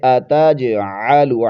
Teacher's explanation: خلیفہ. قالوا، قالوا اتجعل، آتاج، جیم پر قلقلہ کریں گے، اتجعل، عین کو حلق کے درمیانی حصے سے ادا کرتے ہوئے